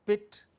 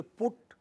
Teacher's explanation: When you say pit, your lips are spread. Also for p. But when you say put, your lips are rounded.